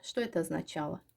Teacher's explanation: Orta cinsdə götürsək də, siz bilirsiniz ki, vurğu əgər düşmürsə, şəkilçiyə bu zaman A kimi tələffüz olunacaq. Həm birinci o A kimi tələffüz olunacaq, həm şəkilçi.